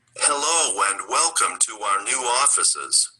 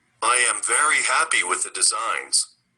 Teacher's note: the words are naturally linked by an inserted w or y sound. Listen and practice, please.